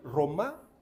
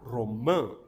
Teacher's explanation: E ela vai usar também, agora o dedo não na laringe, mas na narina, para separar entre a vogal oral, em que a narina não vibra, e a vogal nasal, em que a narina vibra